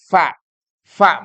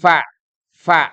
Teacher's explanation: ketemu di tengah antara atas dan bawah hanya kemudian tidak tertutup sama sekali Kalau tertutup jadinya P